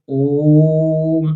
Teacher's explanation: ओम में क्या है, 2 मात्रा से ज्यादा समय लग रहा है। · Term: प्लुत स्वर